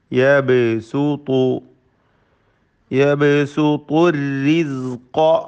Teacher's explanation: ബഇന് ഖൽഖല സുഗ്റ നൽകി ശബ്ദം ചലിപ്പിച്ച് ഹറക്കത്ത് പോലെ വ്യക്തമാക്കണം.